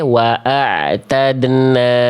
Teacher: Bunyi dalnya itu nyampur dengan bunyi en. Bunyi dal sukunnya, pentulan dennya itu sudah nyaru ke huruf N.